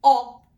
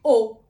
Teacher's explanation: O longo é um som aberto, O. E o breve é um som fechado, O.